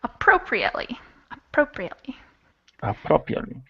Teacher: five syllables and the second syllable is stressed